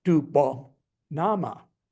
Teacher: So possessive pronoun plus noun assigns a high-low melody